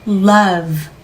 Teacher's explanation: 마지막에 오는 사운드는 유성음이기 때문에 모음에서부터 계속 늘려서 가셔야 됩니다. love 이때 love 으 받침을 넣으시면 안 돼요. love vsound 음소 그대로 공기만 흘려 주셔야 됩니다.